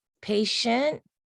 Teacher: would be a long vowel shint the t i e and t is actually gonna make a sh sound not a t sound